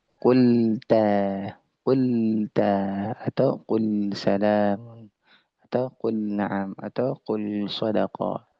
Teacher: huruf lam tersebut adalah tipis dan dia tidak boleh tebal